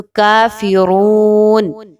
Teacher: اس میں کاف پر کھڑا زبر ہے، 1 سے 2 الف کے برابر آپ اس کی حرکت کو رکھیں گے، زیادہ کم یا زیادہ لمبا نہیں کرنا۔